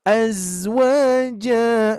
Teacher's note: ada huruf zai ya, yang mempunyai sifat as-safir, mendesis